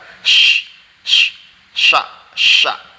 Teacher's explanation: makhrajnya shin itu di tengah-tengah lidah